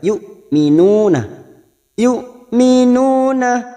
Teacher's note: hamzah sukun jangan samakan dengan ain, hamzah sukun tegas siddah · duma diikuti wawu sukun dua harokat matobi'i